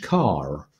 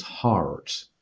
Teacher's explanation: conventionally in American English, particularly middle-class American English, the R sound is foregrounded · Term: rhoticity